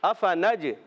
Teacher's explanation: فا اوپر والے دانتوں کے کنارے نیچے والے ہونٹ کے تر سے زیادہ ہوتا ہے۔ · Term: فا کا مخرج